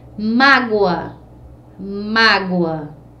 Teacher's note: a última sílaba não é mais forte é a penúltima sílaba que é mais forte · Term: paroxítona